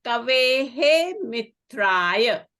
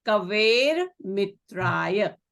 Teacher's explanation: Because it is followed by a soft consonant ma. So this Visarga will become a ra. So it will be kaver mitraya.